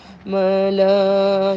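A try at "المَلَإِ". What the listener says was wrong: الف نہیں ہے پڑھنا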